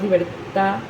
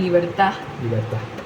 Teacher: Por ejemplo, en libertad hay personas que terminan diciendo nada más libertad. O sea, no terminan de cerrar bien la oclusión porque es muy complicado. O sea, es más fácil terminar con una palabra en la que se pueda seguir el sonido, ahí se corta el sonido.